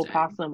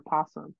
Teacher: they can be pronounced with its first syllable either voiced or silent